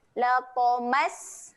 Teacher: sin ketika dia mati sifatnya adalah keluar angin.